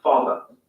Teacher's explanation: Father ends in a simple schwa vowel